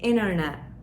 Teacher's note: Bakın buradaki ilk baştaki T'yi söylemiyorum